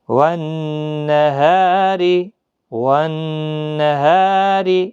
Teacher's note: را کے نیچے زیر ہے باریک پڑھا جائے گا، یہ الف بھی باریک پڑھا جائے گا، مد ہے، ہا الف زبر ہا.